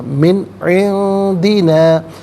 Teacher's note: رحمتن من عندنا، عندی میں نون ساکن، اس کے بعد دال حرف اخفا ہے تو نون ساکن کو اخفا کے ساتھ پڑھیں گے، یعنی ناک میں آواز دے جا کر گنگنانا